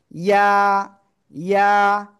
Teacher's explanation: জিহ্বার মাঝখান উপরে তালুর সাথে লাগিয়ে জাস্ট ছেড়ে দিতে হবে